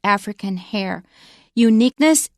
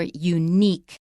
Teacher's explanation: it's stressed on the second syllable in American English